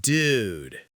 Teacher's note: If I'm disappointed, the pitch drops.